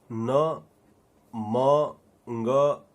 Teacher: इन जैसे ध्वनियों में हमारी नाक हमारी मदद करती है, इसलिए इनको नासिक ध्वनि कहा गया है।